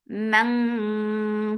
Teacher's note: Mang for fatha open jaws and then make ikhfa, and this ikhfa is heavy. To make any ikhfa heavy, you are lifting your tongue up.